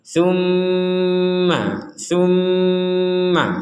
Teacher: Tum dengung dulu di rongga hidung baru Ma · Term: dengungan